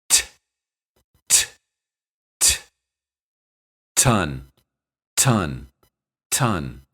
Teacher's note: when T is the first letter in any word it's pronounced with a strong puff of breath this is called aspiration and the symbol for it is a small raised h t